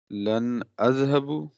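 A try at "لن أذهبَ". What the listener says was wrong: نہیں، لن اذهب با کے اوپر پیش نہیں ہوگا.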